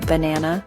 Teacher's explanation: It has three syllables. The stress is on the second syllable.